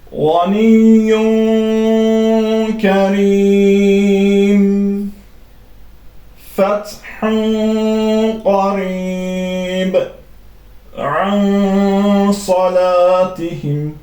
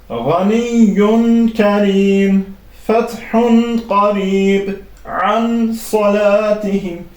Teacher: Tənvin və nun-u sakin açıq şəkildə deyil, gizli bir şəkildə səsi genizə verərək, burun boşluğuna verərək oxunur. Yəni açıq şəkildə izhar şəklində oxunmur. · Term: ixfa